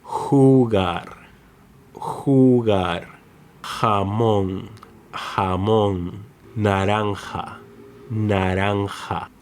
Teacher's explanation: it sounds like a stronger version of the English H, as in house